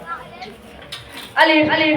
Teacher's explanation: আলিফ মুখের খালি অংশ হইতে আলিফ উচ্চারিত হয়